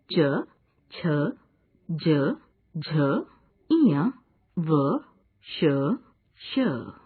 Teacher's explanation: इन वर्णों में जिह्वा कठोर तालु का स्पर्श करती है। ये हैं च, छ, ज, झ, इय, व, श, श। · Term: तालव्य